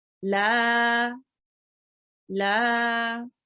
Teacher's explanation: Now lam carries a fatha, that means this is an alif madya. Okay, so lam needs to be prolonged for 2 seconds.